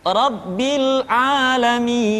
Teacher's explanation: Contoh, al-ana, atau bisa di akhir-akhir kalimat, Rabbil alamin. Jadi mi dibaca panjang karena kita menemukan huruf sukun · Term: tanda panjang